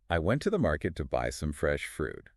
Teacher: you'd naturally hear the strong beats on went market buy fresh fruit · And the little words I to the to some, they're quick and light in between those main beats.